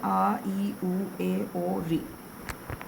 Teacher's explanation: ये हमारे ह्रस्व स्वर में, ह्रस्व स्वर में आते हैं, क्योंकि इनको उच्चारण करने में हमारा कम समय लगता है।